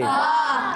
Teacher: با ادا ہوتا ہے دونوں ہونٹوں کے تر حصے سے، جب دونوں ہونٹوں کے تر حصے ملتے ہیں تو ادا ہوتا ہے با۔